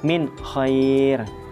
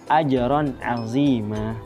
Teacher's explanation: Nah, yang dibaca jelas dalam izhar halki ini adalah nun sukun atau tanwinnya itu dibaca dengan jelas tanpa dengung